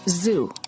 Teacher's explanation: you should feel a vibration in your vocal chords this is how you know that the z sound is voiced